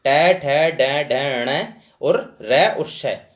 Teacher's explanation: ट ट ठ ड ढ ण और र और श, इनके जो उच्चारण स्थान होंगे वो मूर्धा होंगे